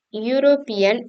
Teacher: European is pronounced European starting with a Y sound, not a vowel sound